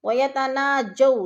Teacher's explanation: عنہو ثم يعودون لما نهوا عنه ويتناجون بالإثم والعدوان، وَيَتَنَاجَوْ، جو پہ وولین ہے، وہ ساکن سے پہلے جیم کے اوپر زبر ہے تو وولین، وولین کو لمبا بھی نہیں کرنا اور جھٹکا بھی نہیں دینا